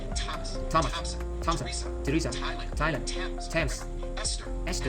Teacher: they are pronounced as if they were spelled with a normal T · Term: TH exceptions